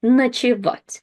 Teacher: And again, unstressed O is pronounced as A.